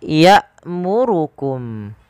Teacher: Pada lafal hamzah ya'murukum, kita baca dengan bacaan yang dia menahan nafas kita dan menahan suara kita. Karena hamzah ketika dia berharakat sukun memiliki sifat yaitu berupa jahar dan syiddah.